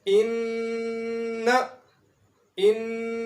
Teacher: نون کے اوپر شد آئی ہے، اس لیے یہاں پر نون کی جو آواز ہے ناک کے اندر جا رہی ہے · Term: غنہ